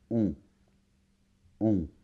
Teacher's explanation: Ici, il s'agit de la voyelle nasale on. C'est un peu comme un O, mais ça vibre plus vers le nez.